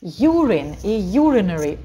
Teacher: Ударение падает только на U. Все остальные гласные, как я уже говорила, читаются невнятно.